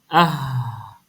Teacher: test makhraj dia tu contoh contoh huruf a kita nak tengok huruf A ni kan yang keluar pada pangkal kerongkong